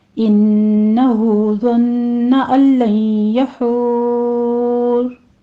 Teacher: इन्न में गुन्ने वाजिबा करेंगे, 2 काउंट करना है।